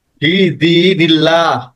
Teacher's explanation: এই যে আল্লাহ শব্দের আগে জের আছে, জের থাকলে হবে পাতলা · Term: পাতলা আল্লাহ